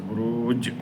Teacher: বুরুজ ওয়াকফ অবস্থায় 3 আলিফ মধ্যে আরদি হবে এবং এটা লাস্টে কলকলা আছে